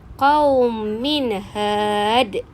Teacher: Tanwin bertemu dengan ha. Tanwin pun dibunyikan dengan jelas dan nyata tanpa dengung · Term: izhar halki